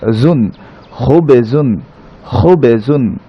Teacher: জায়ের উচ্চারণ স্থান হচ্ছে জিহ্বার আগা, তার নিচের দাঁতের আগার সাথে লাগিয়ে জা উচ্চারণ হবে।